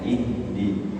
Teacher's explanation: Ha makhrajnya sama dengan hamzah, yaitu di aqsal halqi, pangkal tenggorokan atau tenggorokan paling bawah, yang paling jauh dari mulut.